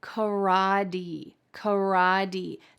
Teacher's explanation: This is exceedingly typical in American English when there is a T surrounded by vowel sounds, it's going to change into a D sound · That final T changed to a D sound.